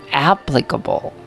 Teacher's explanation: the correct stress should be on the first one